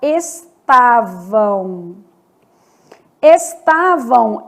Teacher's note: eu vou ter um som de semivogal vamos pegar Estavam estavam esse m do final vai ter som de u